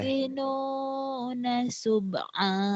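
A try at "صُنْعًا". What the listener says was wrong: Sun'a. Itu bukan, Mbak. Titiknya di atas.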